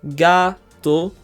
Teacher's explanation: There are two syllables in gato, gato, and we do stress the second to last syllable. We stress the ga part, gato.